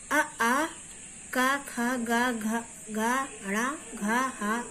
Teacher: ये सब कंठ से बोले जाते हैं, वर्ग का नाम है कंठ